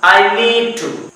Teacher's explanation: नीड का D नहीं पढ़ा जाएगा